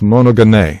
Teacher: the accent is on the last syllable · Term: circumflex accent